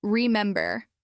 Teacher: clap when you say the stressed syllable. For example, remember. Clap on mem. Then say it a little faster, still keeping the same rhythm.